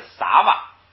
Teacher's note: 狼的，给敦养狼的，给敦养狼的。给敦还是咱们多次出现的这个单氏太子，养就是也，或者是右，或者是在，狼是站起来，狼是起来，起立起来，这是一个停顿，说单氏也站起来，站起来干什么呢？下边啊，撒哇学，撒哇学，撒哇学，撒哇学。撒本来是吃的未来时，这个撒哇这是吃那个动作的未来时，未来时表所，就表示所吃的东西，所以这个撒哇呢就变成了这个食物。这个食物呢，注意这个地方啊，它是当名词用的，就是食品，它是当名词用的。当名词用的时候读的时候呢，这两个音节要读成双音节，就是撒哇。 如果要是当动词用，就是撒哇，就是后边那个后缀啊读轻声 。如果动词后边后缀读轻声，如果是名词呢，两个就是正常的当双音节读，就是撒哇，这就是名词。学是吃的这个过去时，吃了食物，吃了，它下边译的是吃了